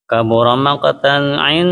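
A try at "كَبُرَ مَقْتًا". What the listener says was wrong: Qafnya kalau mantul jangan make, tapi mako. Kabura maqatan mako. Nah, pokoknya jangan aja deh. Karena dia huruf tafkhim. Mako.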